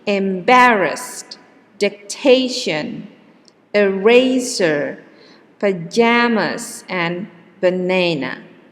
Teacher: for the first row the stress is in the second syllable